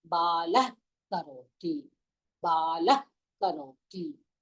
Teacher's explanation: Ka. The ka should come from the throat. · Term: Jikhwa muliam